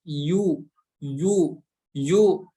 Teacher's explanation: bahas Tengah lidah menempel ke tengah langit-langit atas tapi di sini huruf ya nya berharakat dhomah maka menyempurnakannya dengan memonyongkan bibir kita